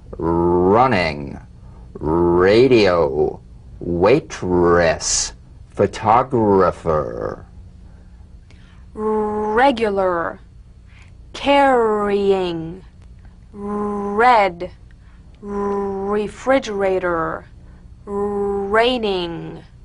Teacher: Now feel the strongly vibrating R on the hard pallet.